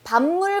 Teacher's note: 여기서 잠깐 주목하실 게 정답은 얘지만 여기를 잠깐 보시면 밤물 같은 경우는 뒤에 있는 비음으로 인해서 앞에 비음이 아니었던 게 비음으로 바뀌었죠. 자, 그래서 이게 비음화예요.